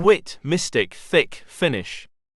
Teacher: the position of the whole tongue is relatively high in the mouth making it a closed vowel